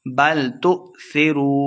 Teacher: حمزہ ساکنہ ہے، جھٹکے کے ساتھ پڑھیں گے ، لمحہ بالکل نہیں کرنا، بل تؤثرو واو مد ہے، دو